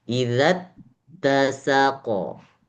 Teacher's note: Ada ta yang bertasydid, maka tekan di huruf ta atau ditahan.